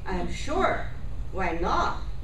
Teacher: I start high and my pitch reaches the bottom of my voice. That's the difference. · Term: Fall